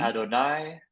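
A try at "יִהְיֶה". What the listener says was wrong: No. Not Adonai. it looks very close. If this had been a vav, you were right, but it's not. It's a yod, so it's Yehye.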